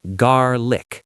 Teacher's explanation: Remember the R in garlic is rolled in the American accent